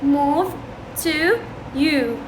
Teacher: وين يكون اللسان؟ يكون بالاعلى بس يكون بالخلف، يكون بالاعلى ويكون بالخلف. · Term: الباك فاولز